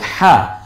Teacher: গলায় চাপ দিয়ে উচ্চারণ করতে হবে কণ্ঠের মাঝখান থেকে, এবং একালিপ টেনে বলতে হবে। খাড়া জের খাড়া জবর উল্টা পেশ একালিপ টেনে বলতে হয়।